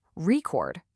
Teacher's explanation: We have the same exact letters here, R-E-C-O-R-D, but where you put the emphasis, the punch, completely changes what the word is. If you stress the first part, record, it's the noun, the thing you listen to. But if you stress the second part, record, it's the verb, the action of recording something.